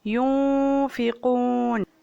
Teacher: نون ساکن پر اخفاء ہوگا غنہ کے ساتھ، غنہ کا مطلب آواز ناک سے نکالنا